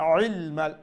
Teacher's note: আইন গলার মধ্য অংশ থেকে